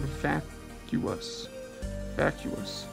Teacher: the two U's make different sounds and have a syllable split between them, the same way the U's are pronounced in an English word like continuum. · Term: hiatus